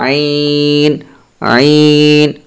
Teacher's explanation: দুই নাম্বার মাখরাজ হালকের মধ্যখান হইতে আইন হা